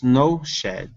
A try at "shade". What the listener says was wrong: Okay, now that last word has a long A in it. So instead of shed, this is shade.